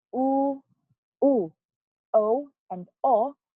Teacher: when we produce the word or the sound o o o and O our lip is rounded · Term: lip roundedness